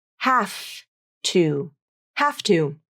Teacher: the final V in have loses all of its voicing when it links up to the voiceless T in two